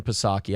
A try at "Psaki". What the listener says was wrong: Well, that P is silent too.